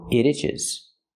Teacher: when I link the sounds and say it together it itches it itches you hear the T and it pronounce as a fast D